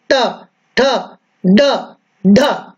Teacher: अपना जो ये ऊपर का स्थान है, अपन जब मुंह को खोलते हैं तो ऊपर वाला जो जबड़ा है उसका जो मध्य स्थान है वो मूर्धा कहलाता है। और जब उच्चारण करेंगे ट, ठ, तो ये जो हमारी जिह्वा है ये जिह्वा मुड़ती है और मुड़ करके मूर्धा को स्पर्श करती है